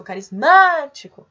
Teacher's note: O má é a sílaba mais forte, que é a antepenúltima, portanto, nós temos aí uma palavra proparoxítona.